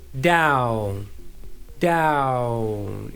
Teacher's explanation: So as soon as I get to ah, I bring my lips forward for ooh